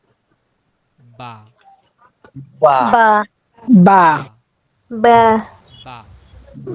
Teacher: ফা পা 15 নম্বর মাখরাজ, হ্যাঁ, দুই ঠোঁটের ভেজা জায়গা থেকে উচ্চারিত হয় বা, একটু ভিতর থেকে, বা, বা বা বা, বা বা, বা বা বা, বা বা বা বা বা।